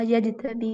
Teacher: جیم پر کلکلا ہو رہا ہے